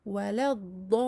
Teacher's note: Mais comme on enchaîne, la prolongation disparaît. Rencontre de 2 soukouns, la prolongation disparaît et on passe directement du lem maftouh au dad ici.